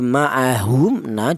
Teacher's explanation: artinya syafawi itu huruf mim ini keluarnya huruf berasal dari bibir. Jadi maahum na dibaca izhar syafawi alasannya mim mati berjumpa dengan huruf nun.